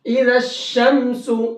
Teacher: لام کو شین میں ملایا ہے، یہاں الف لام کو چھوڑ دیا ہے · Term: حروف شمسی